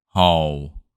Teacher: hardest part is the low falling tone